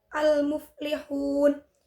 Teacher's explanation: Kemudian pada lafadz al-muflihun, terdapat hukum bacaan idhar qamariyah, yaitu alif lam bertemu dengan huruf mim. Cara membacanya adalah alif lamnya dibaca jelas.